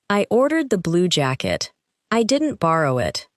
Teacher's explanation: In this case, the strongest word may be ordered